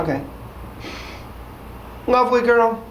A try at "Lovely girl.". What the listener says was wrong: Slow it down. Just say it like Joe O'Neill. Still a question? Still a question.